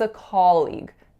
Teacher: the articulation error that I hear is that ah sound not being low back enough. So I really often hear more of a sound here, like a colleague instead of a colleague.